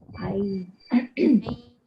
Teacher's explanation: Ai tu pun dengungnya 2 harakat. Ai. Ai naik ke hidung.